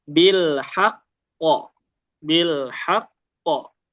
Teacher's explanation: Kalau waqaf kan artinya dia di akhir ya, enggak boleh disambung, enggak ada sambungannya. Jadi dia ditekan dan dikasih jedah.